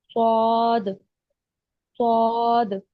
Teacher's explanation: और जो स्वाद की अदायगी होती है वो है जुबान की जड़ को ऊपर उठाकर मोटी आवाज में पढ़ते हैं, स्वाद, स्वाद।